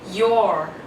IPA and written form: jɔː (your)